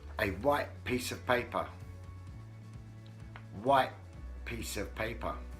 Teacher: if one word ends with a T sound and the next word begins with a P sound, then the T sound is not pronounced. There's a slight pause where the sound was, where the T sound was.